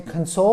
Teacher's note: console we emphasize the second syllable